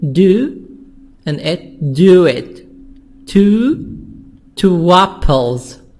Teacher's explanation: the words are linked with a W sound